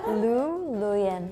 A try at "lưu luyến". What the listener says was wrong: No, yours like luyến. But it has to go up.